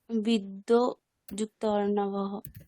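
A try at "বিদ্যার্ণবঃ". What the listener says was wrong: বিদ্যিও নয়, বিদ্যিও বলে কিছু শব্দ হয়? বিদ্যা, বিদ্যা অর্ণবহ।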